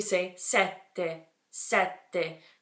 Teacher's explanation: hear how I'm just cutting off the air before the t's I'm totally cutting off the airflow and then going back into the T and making that pause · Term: double consonant